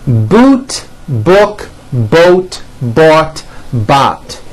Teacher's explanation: sounds move from high to low here we go again and notice how my jaw is opening on each one and also notice how my lips are coming forward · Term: back vowels